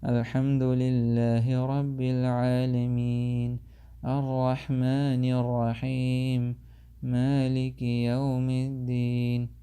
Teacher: And then reading Quran in a way as if you feel tired. You're making your voice sound so low and so light that as if you're tired.